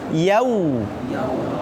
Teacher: Makanya benar-benar kalau waw itu manyun ya. Jangan yau. Jangan berbentuk ke o, tapi ke u, manyun.